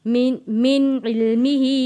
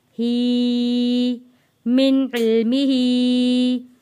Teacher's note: ही के ऊपर छोटी मद है, इसलिए हम इसको खींच कर पढ़ रहे हैं